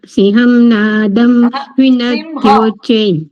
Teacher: અનુસ્વારનો ઉચ્ચારણ મકાર થાય છે